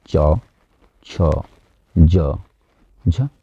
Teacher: स्पर्श संघर्षी हमारा च वर्ग के प्रारंभ के 4 वर्ण, यानी च, छ, ज, झ, तो ये चारों को बोलने में स्पर्श संघर्षी इन्हें बोला जाता है